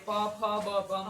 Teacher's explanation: હોઠ જ્યારે ભેગા થાય અને જે અક્ષર બોલાય એને ઔષ્ઠ વર્ગ કહેવાય